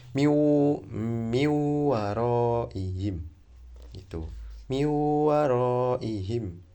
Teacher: Dengungnya itu satu alif dua harokat. Jadi dua hitungan ya.